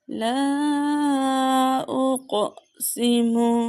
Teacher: لا اقسم، یہاں پہ الف مدہ ہے اور قاف حروف کلکلہ میں سے ہے، اسے جنبش دے کے پڑھیں گے۔ اور یہاں پہ مد منفصل کا قاعدہ ہو رہا ہے، حرف مدہ کے بعد حمزہ دوسرے کلمے میں ہے۔